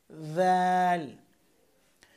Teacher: দাল উচ্চারণ করবেন জিহ্বার আগা উপরের দাঁতের আগার সাথে লাগিয়ে